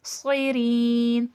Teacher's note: صاد موٹا کر کے پڑھا جائے گا، اور سیٹھی کی بھی آواز آئے گی